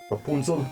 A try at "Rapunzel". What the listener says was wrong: Okay, more of a ooh sound. Instead of Rapunzel. More of a ooh. Like run with fun.